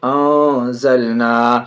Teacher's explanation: نون ساکن کے بعد زا حرف اخفا میں سے ناک میں آواز چھپا کے پڑھیں گے